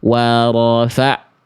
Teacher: bunyi ainnya jadi putus itu jadi hamzah